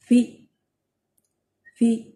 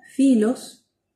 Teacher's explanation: es una aspiración y se articula con los dos labios, sin intervención de los dientes